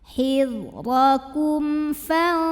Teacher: Berikutnya ada hukum idhar syafawi. Karena mim sukun menghadapi huruf yang bukan mim bukan ba, maka mim dibaca dengan jelas.